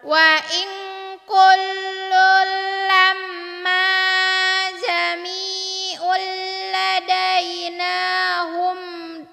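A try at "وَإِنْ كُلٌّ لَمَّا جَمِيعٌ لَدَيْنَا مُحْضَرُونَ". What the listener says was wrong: Hum dapat dari mana?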